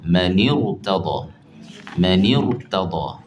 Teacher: Jadi kena tebalkan bunyi ra.